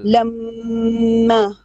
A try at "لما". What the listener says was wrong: No, long vowel. A bit more longer. 2 beats at least. No, you keep saying lamma. No, no, no. Lamma. Now, when you have a fathatan with a yeah, long yeah, yeah, madasri.